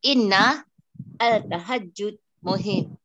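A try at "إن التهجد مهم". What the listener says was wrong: At-tahajjud. Tashamsiyah. Tashamsiyah.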